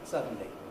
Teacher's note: say suddenly with a schwa between the d and the end i miss out the schwa i just get suddenly so you don't have to do anything